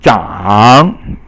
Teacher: 长 is 三 声, falling and rising tone